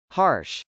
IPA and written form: hˈɑrʃ (harsh)